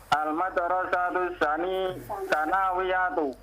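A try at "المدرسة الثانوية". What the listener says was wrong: Sanya panjang.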